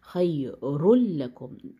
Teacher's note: بیچ میں نون کی آواز بالکل مرج ہو جاتی ہے لام میں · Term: ادغام بغیر غنہ